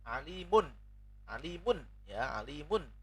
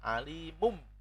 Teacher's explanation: membaca nun sukun ditukar dengan mim. Alimum, atau tanwin dibaca mim. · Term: iklab